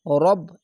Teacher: এখানে এখানে রাব, এখানে রাব, অনেক সবাই রাব বলে, এখানে রাব না হবে, এখানে মোটা অক্ষর, তার জন্য রব এরকম উচ্চারণ হবে